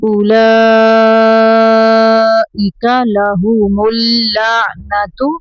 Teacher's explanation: او کو لمبا نہیں کرنا حمزہ پیش کو پڑھیں گے